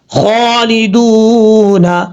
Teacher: دال کے بعد واو مدہ ایک الف کی مقدار لمبا کر کے پڑھیں گے. یہاں جب وقف کریں گے تو نون ساکن ہو جائے گا. · یہاں خا حروف مستعلیہ میں سے پر پڑا جائے گا، دال کے بعد واو مدہ ایک الف کی مقدار لمبا کر کے پڑھیں گے.